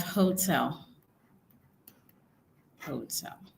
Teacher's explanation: in English the stress for hotel is on the second syllable